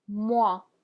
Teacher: So the OI in French makes a wa sound, like in water or wax.